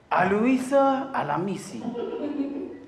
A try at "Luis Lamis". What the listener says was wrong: No A before the L, no I after the S. Luis. Lamis. Luis Lamis.